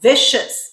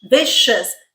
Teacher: So this C makes the sh sound, or in our phonetic IPA, that squiggly line, it makes the sh sound because it is followed by not 1, 2, but 3 vowels, and they're not EI, okay? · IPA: /ʃ/